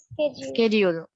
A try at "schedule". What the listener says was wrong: না না, ড হবে না, স্কেডিউল, স্কেডিউল, স্কেডিউল বলো তো। হ্যাঁ, শিডিউলও কিন্তু বলা যাবে, কিন্তু শিডিউলটা ব্যাকডেটেড আর কি।